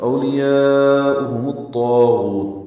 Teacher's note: پیش لگا کے طا سے ملا دیا گیا، تو اولیاؤہم الطاغوت، طا پر پڑھیں گے، دو حرکات لمبا کریں گے، غین کو بھی پر پڑھیں گے، اس کو بھی دو حرکات لمبا کریں گے